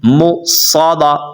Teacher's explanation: یہ میم کے اوپر حمزہ ہے تو اس کو اپنے جھٹکا دے کر پڑھنا ہے